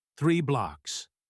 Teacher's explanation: The th sound in 3 requires putting your tongue between your teeth. It is a quiet sound. 3 blocks. If the speaker mumbles, 3 might sound like free.